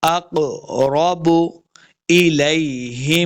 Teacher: قاف حروف مستعلیہ سے موٹا پڑھنا ہے